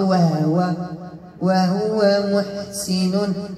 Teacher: الحاء فيها جريان نفس وفيها كذلك جريان صوت، معنى فيها همس وفيها رخاء